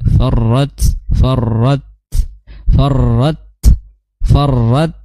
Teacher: Kenapa? Karena ro dia memiliki sifat takrir bergetar ujung lidahnya